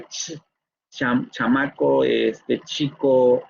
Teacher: este sonido ch, es el africado postalveolar sordo